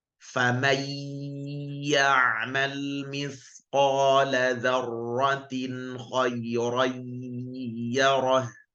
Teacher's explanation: Demikian pula ketika bertemu dengan ya, nun mati atau tanwin bertemu ya, maka tidak hanya masuk saja, tapi juga disertai dengung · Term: idgham naqis